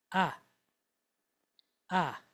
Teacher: a long duration A-type vowel. So when I say long duration, that means you're going to hold it for about a second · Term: kamats